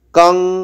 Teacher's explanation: অনস্বরটা উঙের মতো শোনাবে, ক বর্গের যে অনুনাসিক উঙ, সেই উঙের মতো শোনাবে, কারণ পরবর্তীতে আবার ক দিয়ে শব্দ শুরু হচ্ছে